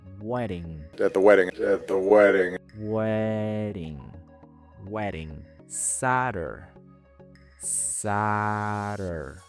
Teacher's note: la flat D, que es una reducción de la D en inglés que suena como una R suave en español. Esta reducción ocurre cuando la D se encuentra en medio de dos sonidos de vocales. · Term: flap D